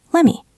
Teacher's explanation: The T and let assimilates into the M. Let me. Let me look it up.